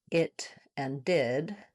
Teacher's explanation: the I vowel, the pink pig vowel, is also a high front vowel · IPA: /ɪ/